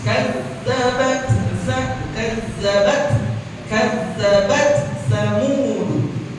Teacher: Tak sukunnya karena dia sukun, jadi wajib dibaca hams.